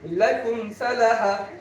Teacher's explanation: মিম সাকিনের পরে বাও নাই, মিমও নাই, তাই গুণা হয়নি